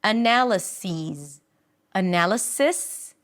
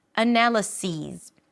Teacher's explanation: So instead of sis, what you hear is sees. So the relaxed I turns into a high e and the s turns into a z.